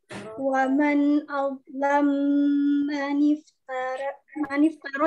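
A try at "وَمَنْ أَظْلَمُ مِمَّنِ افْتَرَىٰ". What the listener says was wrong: Waman azlam mimnya yang kedua masih. Waman azlam mimman iftari.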